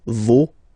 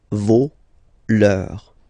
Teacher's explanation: even if you've got this final s, you don't pronounce it, as it was the case already for this word, no, you don't pronounce the final s, vos, you don't pronounce it, leur.